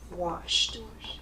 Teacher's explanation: So sh is voiceless.